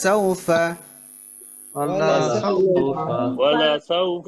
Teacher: এ সাউ হচ্ছে লিনের হরফ, এটা খেয়াল রাখতে হবে, এটা কিন্তু তাড়াতাড়ি।